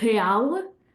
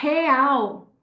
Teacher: And in Brazil, they'll say real. Okay, so that L even becomes a W sound